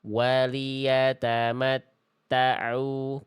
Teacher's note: Waliyatamatta'u, jangan ta'u. Ta-nya jangan ada nuansa ain dulu. Ainnya nanti belakangan. Ta-nya dulu beres.